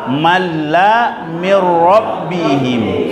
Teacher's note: Kemudian idgham bila guna apabila nun sukun atau tanwin bertemu dengan huruf lam dan ra, maka dibaca nun dan tanwinnya melebur tapi tidak didengungkan